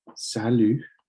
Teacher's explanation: You don't pronounce the T. And when the U comes right after, when the U is there by itself without an O, you don't pronounce it oo.